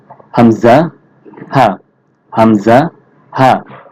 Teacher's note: কণ্ঠনালী শুরু হতে উচ্চারিত হয় একটু শক্ত করে উচ্চারণ করতে হবে